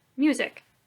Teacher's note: the second syllable in music is unstressed